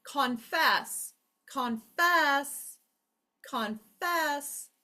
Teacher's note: The second syllable lasts the longest. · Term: accent